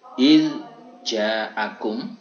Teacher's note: Seperti contoh misal iz ja'akum, ini menurut Imam Hafiz berkaitan mutaqariban shaghir yang berdekatan sifatnya tapi makhrajnya berjauhan, ini Imam Hafiz tidak boleh mengidghamkan, alias zalnya tetap harus dibaca jelas